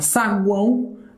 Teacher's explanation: esse aqui eu tenho um tritongo e ele é um tritongo nasal